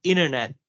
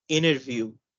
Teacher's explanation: the T after an N is often silent in American pronunciation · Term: silent T after N